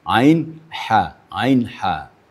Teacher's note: Di ha ini makhrajnya sama dengan ain.